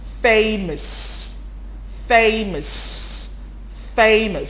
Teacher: the o-u-s all becomes the schwa